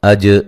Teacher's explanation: جیم پہ قلقلہ کرنا ہے